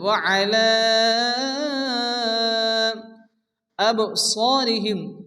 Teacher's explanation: দ্বিতীয় শব্দের শুরুতে হামজা আসছে মধ্যে মুনফাসিল চার আলিফ পরিমাণ টেনে পড়তে হবে